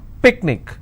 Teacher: I will stress on pick